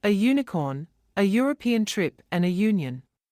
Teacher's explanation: Their beginning sound that is pronounced like U is actually a consonant sound, which requires the article a.